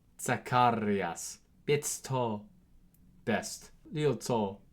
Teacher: Now Z, interestingly, has two sounds. First of which, as in German, so it's a TS sound, so a TS sound.